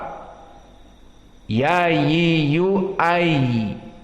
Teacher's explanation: Maka inilah yang dinamakan dengan ar-rukhawah. Dan rukhawah di sini dia membutuhkan beberapa waktu di saat disukunkan, sehingga tidak dibaca dengan cepat.